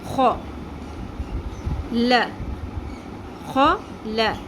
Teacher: ہا کی آواز آپ کو محسوس ہو رہی ہے، ہا اور خا میں فرق محسوس ہوا. خا میں خراش بھی آئے گی اور پر بھی ہوگا